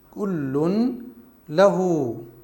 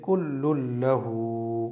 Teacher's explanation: لام کو لام میں ملا دیں گے، یعنی نون کو بلا غنہ کے پڑھیں گے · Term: ادغام بلا غنہ